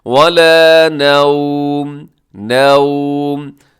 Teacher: وقف کریں گے تو آخر میں جو تنوین ہے اس کو ہم ساکن کر دیں گے، میم کو ساکن کر دیں گے